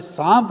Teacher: जो ध्वनियाँ पहले अनुनासिक नहीं हो किंतु बाद में अनुनासिक हो जाए, जैसे संस्कृत का शब्द सर्प, सर्प से सांप हो गया जिसमें अनुनासिकता आ गई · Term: अनुनासिकरण